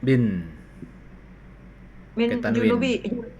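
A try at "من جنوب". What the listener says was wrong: Pakai tanwin min junubin.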